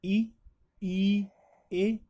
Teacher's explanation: जिन स्वरों के उच्चारण में जिव्या जीभ के आगे का भाग सक्रिय रहता है वे अग्र स्वर कहलाते हैं